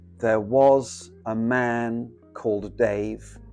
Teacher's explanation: And there we have six syllables and every other syllable is stressed. So it's an example of iambic uh not pentameter iambic trimeter.